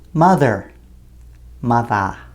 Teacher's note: Words that end in -er are spoken with a clear r pronunciation at the end of the word in North American English